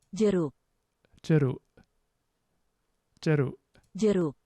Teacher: That's not k at the end, at least fully released, is it? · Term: glottal stop